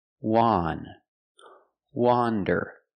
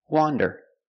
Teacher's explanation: Wander is pronounced with the short O sound, the sound ah, like you hear in hot, and stop.